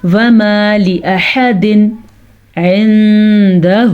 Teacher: نون ساکن کے بعد دال آ گیا ہے تو اس کو اخفاء کے ساتھ پڑھنا ہے · یہاں پہ ہم نے نون تنوین کو ظاہر کر کے پڑھنا ہے کیونکہ عین آ گیا حروف ہلکی میں سے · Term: اظہار